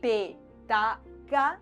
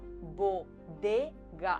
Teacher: el punto de articulación es el mismo, pero pasamos de tener una consonante sorda a tener una consonante sonora